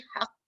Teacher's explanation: Dia haq, dia tahan sekejap, lepas tu lepas.